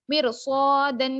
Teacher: مرصادن میں را ساکنہ سے پہلے زیر ہے لیکن اس کے بعد حرف مستعلیہ ہے، اس وجہ سے اس را کو موٹا پڑیں گے